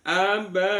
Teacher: Abuhum ada mim sukun bertemu dengan fa namanya bacaan bacaan ee izhar syafawi. Izhar itu jelas syafawi di bibir